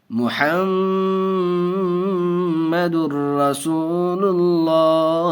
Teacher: دیکھیے ناظرین، تنوین ہے دو پیش تنوین کے بعد را آیا ادغام یرملون میں سے، اور ہم نے ابھی قاعدہ پڑھا کہ لام اور را کی صورت میں بغیر گنہ کے ملا کر پڑھیں گے، تو ہم اس کو بغیر گنہ کے پڑھیں گے۔ دو پیش تنوین کے بعد ادغام یرملون کے 6 حرفوں میں سے را آیا، اس لیے بغیر گنہ کے پڑھیں گے۔ محمد الرسول اللہ، میم پیش مو، حامیم زبر حم، میم زبر ما، دال را دو پیش در، دو پیش در، محمد را زبر را، سین واو پیش سو، رسو، لام پیش لل، رسول، لام کھڑا زبر لا، رسول اللہ، حاضر ہی، رسول اللہ۔